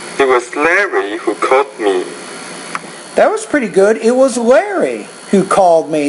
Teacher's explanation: you're focusing on the word Larry because it's different from the word uh Kent